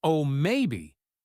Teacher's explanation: with a bright, excited, rising tone, it could mean they're genuinely considering it, and they find the idea appealing.